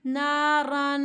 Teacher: تو ہم نے نون ساکن کی آواز کو یہاں پر چھپا دینا ہے۔ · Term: اخفا